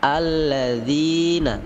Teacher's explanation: Alladzina, zi panjang 2 harokat